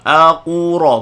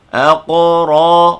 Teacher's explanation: Aqura, bukan. Aqra, ra baca tebal, jangan muncung.